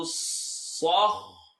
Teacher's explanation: صاد خاء and ra all heavy